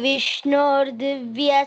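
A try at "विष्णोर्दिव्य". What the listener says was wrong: Vishnor. Okay, make it long. Vishnor. No, nor.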